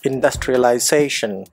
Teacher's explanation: அதில் சேஷன் அப்படிங்கிற அந்த சிலபிளில் தான் ஸ்ட்ரெஸ் வருது